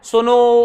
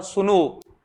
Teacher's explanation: सुनो के बाद ओ की मात्रा चली जा रही है इतनी लंबी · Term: लंबी आवाज